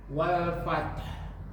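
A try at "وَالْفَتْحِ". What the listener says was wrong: Nah, jangan ditahan kalau wal fath. Ditahan. Wal fath. Buka. Gitu aja.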